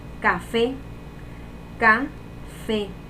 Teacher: La sílaba tónica sería fe y sería una palabra aguda.